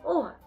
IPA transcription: о